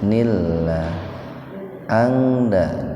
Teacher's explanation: nun mati ketemu dal dalam satu kata. Jadi dibacanya ihfa, tapi ihfanya ihfa akrob. Dibaca samar tapi sepintas.